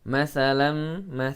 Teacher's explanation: Ba ma ya, hati-hati ini dari makhraj yang sama bibir, jangan sampai ya, jangan sampai teridghamkan satu sama lain. Masalam tanwin bertemu dengan mim maka idgham bi gunnah dibaca dengan dengung